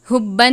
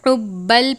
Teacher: حبن نہیں پڑھیں گے، حبل پڑھیں گے اور غنہ نہیں کرتے